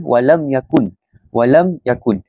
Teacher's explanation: Mim tersebut dibaca jelas tanpa dengung. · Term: izhar syafawi